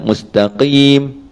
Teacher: Huruf qaf pun sama juga, huruf isti'la, qa. Tetapi bila huruf qaf berbaris di bawah, dia punya nilai ketebalan isti'la tinggi dia tadi tu dikurangkan sikit